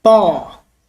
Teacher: E tem um som como na palavra pó, um som aberto